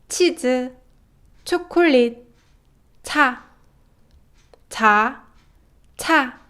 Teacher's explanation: And Korean ch sound is a completely aspirated sound